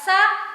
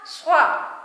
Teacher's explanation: اور مین چیز سین اور صاد کے مخرج میں فرق کرنا. سین باریک جبکہ صاد موٹا ادا کیا جاتا ہے.